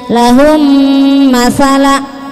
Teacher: Mim ketemu mim pasti dengung. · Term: idgam mislin, idgham mislain